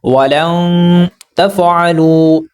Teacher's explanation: میں نے نون کی آواز کو چھپانے کی کوشش کی ہے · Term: اخفا